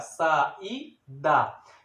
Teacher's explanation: é uma palavra paroxítona que o I aí é uma vogal que fica sozinha em uma sílaba, separada das outras vogais, aí porque se chama de hiato, um espaço que se dá entre uma e outra, ela recebe o acento, ok?